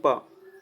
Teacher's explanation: जब हम इसका उच्चारण करते हैं तो हवा जो है वह पूरी रुक जाती है। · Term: अवरोधी व्यंजन